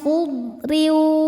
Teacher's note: huruf ro dibaca tarqiq karena berharakat tanwin kasrah. Cara bacanya tipis.